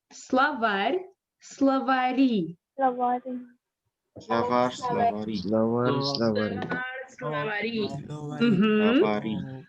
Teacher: we say словари in order to keep R soft